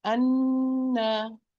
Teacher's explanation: I pronounce the ghunna for 2 counts, and then I pronounce the fatha. Anna. And when I'm lowering the lower jaw here, only I am pronouncing the fatha.